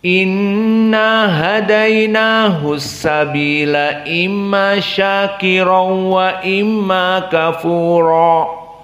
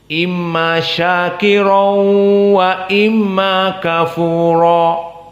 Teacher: Dibaca idgham masuk harf kepada harf yang lain, tanpa gunnah, tanpa dari makhraj khaisum, dan tanpa dua harokat. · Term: idgham bila gunnah